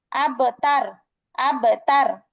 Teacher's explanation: কিন্তু আপনি যদি বলেন আব তার আব তার তাহলে কিন্তু বায়ের আওয়াজটা চিকন হয়ে যাচ্ছে